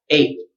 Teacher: Your tongue should come up though to make the T, but then you just decide not to say the T at the end. So put your tongue up, but don't let the air out.